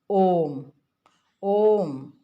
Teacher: प्लुत स्वर में 3 मात्रा का समय लगता है